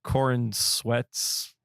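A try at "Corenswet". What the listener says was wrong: I just love how he put the emphasis on the sweat.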